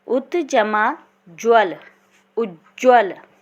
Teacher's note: त का यदि मेल ज से होगा तो इनके मेल से ज विकार उत्पन्न होगा।